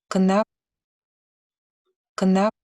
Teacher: And which results very frequently in a transitional vowel between the 2 consonants within a cluster. And the quality of the vowel is pretty much similar to a schwa · So here on the slide, I have a sample syllable that's produced by a Georgian speaker, and it's phonologically, it's supposed to be gna, G-N-A, without a vowel, but as you can see here, there is some vocalic element between G and N